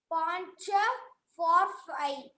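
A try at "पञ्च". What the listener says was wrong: Pancha. There is no dirgham here. Pancha.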